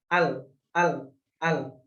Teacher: Huruf lam adalah makhrajnya keluar dari ujung sisi lidah bertemu dengan gusi atas, langit-langit atas bagian depan. · Dan nggak boleh ada pantulan karena bukan huruf qalqalah.